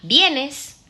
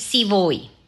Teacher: tenemos los ascendentes, que es preguntas cerradas. ¿Vienes? Las descendentes, que son afirmaciones o finales